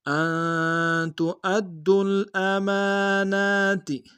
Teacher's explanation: امانہ میں میم کے اوپر کھڑا زبر ہے، نون کے اوپر کھڑا زبر ہے، دونوں کو ایک انداز میں کھینچیں گے